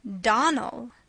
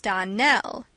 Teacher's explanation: the correct pronunciation of our name is Donnell. Accent on the last syllable.